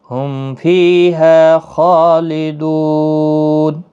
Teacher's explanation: ہم، میم ساکن کے بعد فا آیا ہے، نہ با ہے نہ میم ہے، تو اظہار شفوی ہوگا، میم کو ظاہر کر کے پڑھیں گے